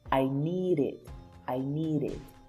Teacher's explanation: Remember that here we have consonant, but this D is in between E and I, which are vowel sounds. That's why it's pronounced as R.